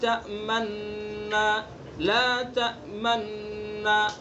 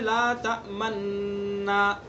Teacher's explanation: اشمام کریں گے، ہونٹوں سے اشارہ کریں گے، چونکہ وہاں پیش ہے نا، پہلے نون کے اوپر لا تأمنو نہ ہے نا، پہلے نون کے اوپر پیش ہے، اور یہ پڑھنا ضروری ہے اس طرح سے.